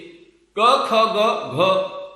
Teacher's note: वेलम raise हो जाता है और वो ओरल साउंड कहलाती है।